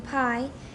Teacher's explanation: start and before the start of the voicing for the vowel if you put your hand in front of your lips while saying PI you can feel the burst of air that comes out during the period of period period of voiceless · Both stop consonants are essentially voiceless. But in pi, after the release of the lip closure, there is a moment of aspiration, a period of voicelessness after the stop articulation and between the start of and before the start of the voicing for the vowel.